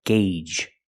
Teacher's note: The first G is a hard G sound, followed by the long A, gay, and the second G is the J sound